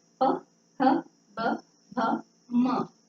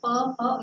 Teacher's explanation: प का बोलते समय आपके ओठ एक दूसरे के लिए चिपक रहे हैं ना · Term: ओष्ठव्य